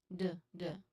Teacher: This is a voiced sound. You make it in the exact same mouth position as T, tongue against the alveolar ridge.